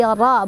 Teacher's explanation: Ro-nya dibaca secara tafkhim atau tebal karena ro-nya berbaris fathah. Jadi ro bukan ra ya.